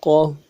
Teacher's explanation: قاف زبر قا، قاف کو موٹا کریں گے۔ موٹا کرنے کے لیے زبان کا بیچ اٹھائیں گے۔